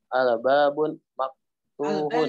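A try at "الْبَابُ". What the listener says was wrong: Al-babu, jangan pakai tanwin. Al-babu.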